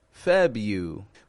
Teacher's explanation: the first R in February the average American does not pronounce the r in February